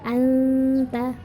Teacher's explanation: intinya dengung selama tiga harokat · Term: ikhfa Haqiqi